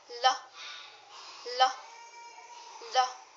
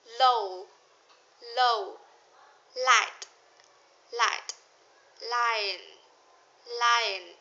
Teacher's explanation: To make this sound, you need to put your tongue on the roof of your mouth. The air goes over the sides of your tongue and out of your mouth.